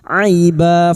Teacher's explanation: Fathah bertemu ya sukun kita lunakkan huruf lin